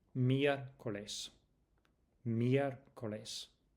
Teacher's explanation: Listen to the stress on the e because the accent indicates it.